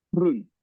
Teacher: We also have a very hard guttural G sound.